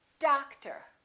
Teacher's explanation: we stress the first syllable we reduce the second therefore these two o's are also going to be completely different